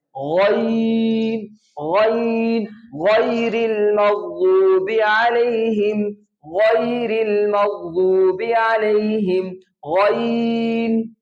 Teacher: موٹے حروف کو پڑھنے کا یہ طریقہ ہوتا ہے کہ آواز گلے کے شروع سے اور ہونٹوں کو گول کیا بغیر اور آواز کو ناک میں لے جائے بغیر موٹا کر کے پڑھنا ہے